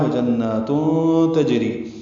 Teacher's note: وجنات میں نون مشدد پہ غنہ ہے، 2 حرکات نون کو لمبا کرنا ہے. تنوین کے بعد تا آنے کی وجہ سے اخفا ہے.